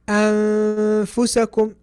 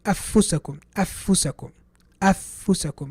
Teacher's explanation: I'm not really putting the tip of my tongue on my palate where the noon should be pronounced. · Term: ikhfa